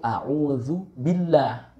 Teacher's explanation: kita baca dengan tarkik atau tipis. Mengapa? Karena sebelum huruf lam yang berada di lafzul jalalah, ya, itu berharokat kasroh.